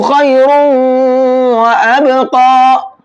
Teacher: تنوین میں جو نون کی آواز نکلتی، اب وہ نون کی آواز نہیں نکلے گی بلکہ واو کی آواز نکلے گی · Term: ادغام مع الغنہ